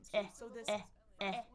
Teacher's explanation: So, this is E as in bed or head. My tongue is down in the in the bottom. My jaw is pretty open.